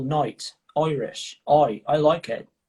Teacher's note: some of you might say oi instead of I.